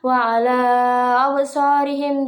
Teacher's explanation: Lalu pada kata wa ala absarihim itu terdapat 3 hukum bacaan, yaitu mad jaiz munfasil yang dibaca panjang 2 atau 4 atau 5 harokat, lalu qalqalah syugro yang dipantulkan, dan matobi'i secara bacanya dipanjangkan 2 harokat.